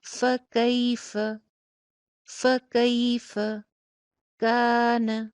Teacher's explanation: فا کے اوپر زبر، لاسٹ والی فا پہ بھی زبر، دونوں فا کی حرکت چھوٹی چھوٹی سی اور درمیان میں یائے لین